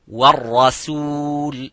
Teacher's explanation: So the ra is mufakham, as you can see, but the sin is muraqqaq.